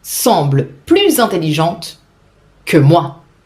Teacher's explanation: Lucie semble plus intelligente, starting with a vowel. I will make the final S sound like a Z to facilitate the pronunciation